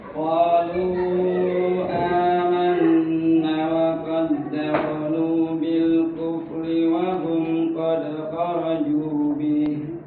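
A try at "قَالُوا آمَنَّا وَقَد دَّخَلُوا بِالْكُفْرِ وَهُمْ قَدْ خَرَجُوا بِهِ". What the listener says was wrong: Kan tadi amanna ada alif ya. Panjang ya, dua harokat. Jadi kalau ada alif, ya pokoknya ada mat gitu. Ada mat itu harus dipanjangkan dua harokat.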